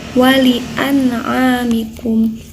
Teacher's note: ini ada nun sukun bertemu dengan ain ya, dibacanya harus jelas, harus n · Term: izhar